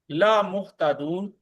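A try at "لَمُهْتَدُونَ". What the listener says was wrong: نہ نہ نہ نہ نہ، آپ نے لا محتدون کہا ہے جس کے معنی بالکل الٹ ہو جائیں گے۔ لمحتدون، اس کو خاص طور پر دیکھنا ہے آپ نے، لمحتدون یقیناً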